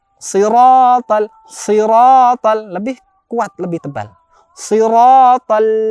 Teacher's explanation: Adalah termasuk huruf tebal. Cara mengucapkannya adalah pangkal lidah kita angkat.